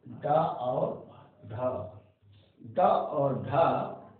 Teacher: और इसके बाद छा, अभी मैंने जो चार्ट बनवाया था उसमें बताया था एक बार फिर इसमें भी ये बता दूं, उत्क्षिप्त व्यंजन जिसमें जीभ झटके के साथ, जीभ की जो अग्रभाग है यानी नोक, जीभ की नोक झटके से नीचे की ओर आती है